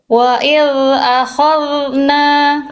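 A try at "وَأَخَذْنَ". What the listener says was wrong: Yang ini masih udah lumayan, tapi masih agak ke bawah nuansa kho-nya. Khol, khol, bukan khol, tapi khol. Tuh, beda antara khol dengan khol.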